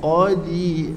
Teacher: Qaf duduk tebal, angkat pangkal lidah. Qadi, dah ujung lidah belakang di atas.